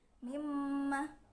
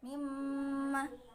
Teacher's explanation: nun sukun bertemu dengan mim, dibaca idgham bi gunnah, jadi nunnya dibaca mim seperti mim.